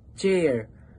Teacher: Halimbawa na lamang is 'yung CH sa salitang chair na napapansin naman natin na iniipon muna natin yung hangin bago natin sabihin yung chair